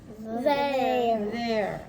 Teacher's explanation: Yes, it's a voiced TH.